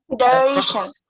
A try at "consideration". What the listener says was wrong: yeah, secondary syllable, you have to put a little bit of stress there. Consideration. Consideration. Consideration. consideration. You see, ration, ra sound that is emphasized.